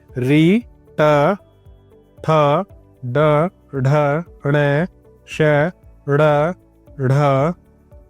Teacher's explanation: यह जो वर्ण है यह मूर्धा से उच्चारित किए जाते हैं। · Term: मूर्धन्य